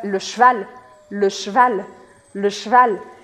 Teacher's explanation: Aqui a minha regra de pronúncia que eu tenho para falar para você é praticamente para você cortar a letra E.